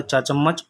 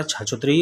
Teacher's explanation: तो ये तालव्य, तालु मुंह के भीतर से बोले जाते हैं। छत का पिछला जो मुंह के छत होती है, जो जिसको तालु जो जीभ लगाते हैं ऊपर, तो वो तालु कहलाता है।